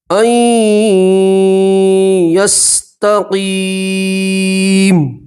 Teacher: یہاں نون سکین کے یا کے اندر ادغام کریں گے، گننا کے ساتھ پڑھیں گے، ٹھیک ہے۔ یہ نون نہیں پڑھیں گے، حمزہ کو سیدھے جا سے ملائیں گے اور گننا کے ساتھ پڑھیں گے، ٹھیک ہے۔